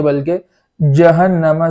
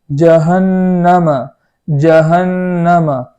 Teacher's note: زبان کے بیچ کا حصہ اوپر تالو میں لگائیں گے اور اس کو وہاں سے جیم ادا کریں گے، اور اسی کلمے کے اندر نون پر تشدید ہے تو وہاں ایک الف کے برابر غنہ کریں گے۔